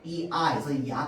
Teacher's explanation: 앞에 이가 있고 그 다음에 아가 붙으면 어떤 소리가 나는 거야? 야 소리가 나는 거거든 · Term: 이중모음